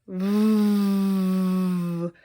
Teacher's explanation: Your voice box is vibrating when you make the V sound.